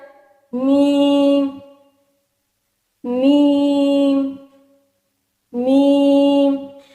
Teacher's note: دونوں ہونٹوں کے خشک حصہ سے میم ادا ہوتا ہے